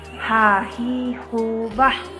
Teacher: huruf H keluar dari tenggorokan yang terjauh